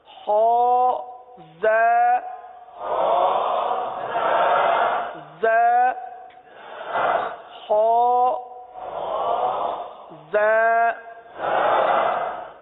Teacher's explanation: یہ زا دونوں دانتوں کو بند کر کے زبان کو نیچے لگاتے ہیں. زا اس میں سیٹی کی آواز